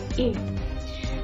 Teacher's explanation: vokal tengah, yakni vokal yang dihasilkan oleh gerakan lidah bagian tengah, misalnya bunyi E.